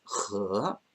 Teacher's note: a second tone, rising tone on E, and the E here in pinyin is so it's 和.